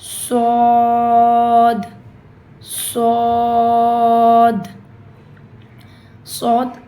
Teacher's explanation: شین صاد صاد صاد heaviest letters میں سے ہے، جو قرآن میں جو سب سے ہیوی ترین بھاری ترین پڑھے جانے والے حروف ہیں وہ 4 ہیں، اس میں سے ایک صاد ہے۔ تو صاد کو آپ نے بہت موٹا بھاری پڑھنا ہے، اور جس طرح منہ اندر سے کھولنا ہے